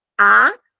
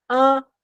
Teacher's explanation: é diferente de dizer a se você tampar seu nariz a o a sai sem fazer vibração nenhuma aqui nas vias nasais mas é diferente de você dizer ã o a com m